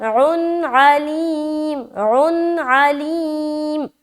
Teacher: دو پیش کی تنوین کے بعد عین ہے تو یہاں پر تو اظہار کا قاعدہ ہے, تو سمپل ظاہر کرنا ہے نون کی آواز کو. اور اس کے بعد علیم, عین زبر عا, لام یا زر لی, یا مدہ اور میم کے اوپر وقف, دونوں جگہ عین واضح ہونا چاہیے.